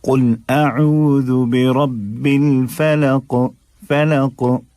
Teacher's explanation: काफ भी अदा हो जाए, वाज़े भी हो जाए, और उसके अंदर शिद्दत भी इतनी शिद्दत पैदा ना हो कि वो दो लगने लगे, यानी कि तशदीद ना लगे।